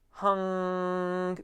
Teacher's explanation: that ng closes off the mouth with tongue